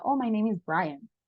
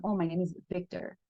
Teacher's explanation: Cuando alguien me está hablando en inglés y yo escucho esa pequeña vibración, entonces yo entiendo que es una V.